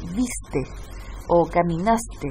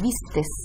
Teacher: esa S al final sería un paragogia porque agregan un fonema que no corresponde al final de esa conjugación verbal